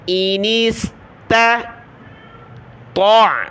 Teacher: یہ باریک تا ہے نقطے والی، اس کو پتلا پڑھنا ہے، اگلی تو جو ہے بڑی ہے، اس کو موٹا پڑھنا ہے ، موٹی تو کو ہم نے عین کے ساتھ ملانا ہے،